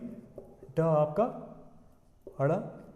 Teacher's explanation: तो जो उच्छित किसको बोलते हैं, जीभ हमारी जो है सबसे पहले क्या करती है, मूर्धा को छूती है, यानी ये जो जीभ है सबसे पहले कहाँ जाएगी, मूर्धा को छुएगी और झटके के साथ बाहर आती है। यानी जीभ पहले छुएगी क्या, मूर्धा को, और झटके के साथ जब नीचे आती है उसको हम बोलते हैं उच्छित। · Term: उच्छिप्त